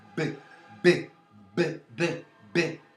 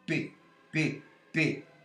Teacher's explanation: se a corda vocal funcionar, b, b, b, b, b, ela será sonora. Se não funcionar, p, p, p. Aqui não funciona, portanto, eu tenho uma surda.